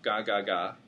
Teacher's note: G is made at the back of your mouth